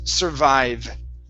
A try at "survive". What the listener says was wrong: Oh, the last V was good. The first V was a B. So instead of survive, it's V. Survive.